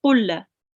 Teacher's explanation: Make sure not to make the lam long. It's just a fatha. So it's just kulla.